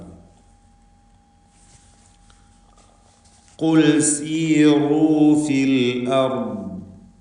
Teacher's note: ഖാഫ് തഫ്ഖീം ചെയ്യേണ്ട ഇസ്തിഅലാഇൻ്റെ 7 അക്ഷരങ്ങളിൽപ്പെട്ടതാണ്. തടിപ്പിച്ച് സ്വരഭാരത്തോടെ ഖാഫിനെ ഉച്ചരിക്കണം. എന്നാൽ ദമ്മ ആയതുകൊണ്ട് താരതമ്യേന ഫത്ഹിൻ്റെ അത്ര തന്നെ ഇല്ലാത്ത തഫ്ഖീമാണ് ഉണ്ടാവുക.